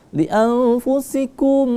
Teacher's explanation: annya kita sama-samarkan karena nun mati bertemu dengan huruf fa, itu maka hukum bacaan menjadi ikhfa.